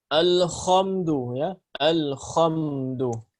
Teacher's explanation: Ini banyak yang membaca huruf ha seperti huruf kha. Karena makhrajnya huruf kha berada di tenggorokan atas ya yang dekat dengan makhraj daripada huruf ha